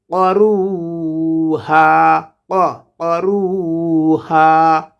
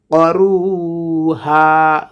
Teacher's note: কফ হরফটিকে আমরা উচ্চারণ করব জিহ্বার গোড়া তার বরাবর উপরে তালুর সঙ্গে লাগাই। করুহা রু একাল প্রাণ হবে পেশের বাম পাশে জজমেলা ওয়াও এসেছে, হা একাল প্রাণ হবে জবরের বাম পাশে খালি আলিফ এসেছে।